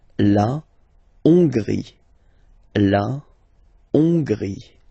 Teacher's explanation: H doesn't exist, so you don't pronounce it. So it starts with O-N, on, and then gris, final E, not pronounced.